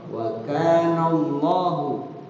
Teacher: Wa kana adalah matobi. Ya, lafzul Allah dibaca tadkhim, dibaca tebal karena bertemu dengan sebelumnya huruf nun berbaris fathah.